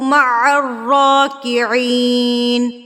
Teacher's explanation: را کے اوپر کھڑی زبر ہے اور را کو پر کر کے بھی پڑھنا ہے اور 2 حرکات کے برابر ہم اس کو کھینچیں گے